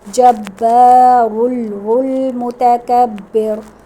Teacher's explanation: متکبر پہ را باریک پڑھیں گے کیونکہ اس سے پہلے زیر ہے